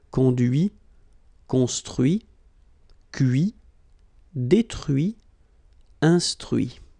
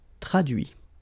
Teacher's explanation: Okay, so the same rule because, well, basically it's the same group and then same rule, final T not pronounced